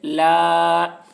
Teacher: الف سے پہلے زبر ہے، الف مدہ ہوا، اس لیے الف مدہ کو ایک الف کے برابر کھینچ کر پڑھیں گے